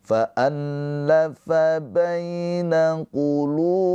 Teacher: lu dibaca panjang dua harakat karena ada pemanjangnya ini wau sukun. Wau sukun sebelumnya harakatnya dommah. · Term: Mad thobi'i